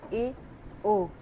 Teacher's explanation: अर्धसमृत स्वर के उच्चारण में मुख्य द्वार कम या आधा बंद रहता है